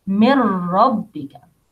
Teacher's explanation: noon sakina will change to letter ra. Mirra, pronounce ra twice.